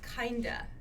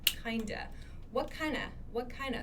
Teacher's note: when we're speaking in like everyday conversations we reduce this kind of to kinda